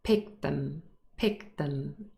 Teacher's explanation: There's also linking occurring here. Pick them, the t in picked is lost, this is elision, and it joins with them.